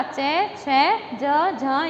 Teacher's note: च वर्ग और श, इनका उच्चारण जो होता है सूत्र के हिसाब से वो तालु से होता है